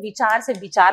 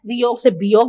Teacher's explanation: वचन का व बकरी के ब में बदल जाता है